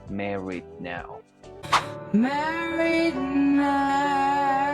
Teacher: Acá lo único que tenemos que hacer es mantener ese sonido de D por un momento y liberar el aire con la N. Es decir, al decir married, no vamos a liberar ese sonido de D. Vamos a mantenerlo llevando la lengua al paladar y vamos a mantenernos ahí por un microsegundo para luego pronunciar el sonido de la N.